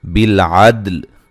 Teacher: ولیہ واو کو ادا کرتے ہوئے دونوں ہونڈوں کو گول کرنا ہے. بالعدل دال کو ہلا کے پڑھنا ہے، قلقلہ کرنا ہے، لام کو ہلانا نہیں ہے